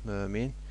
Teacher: Mömin sözündə də alim sözündə olduğu kimi uzanma birinci hecada, vurğu isə ikinci hecadadır.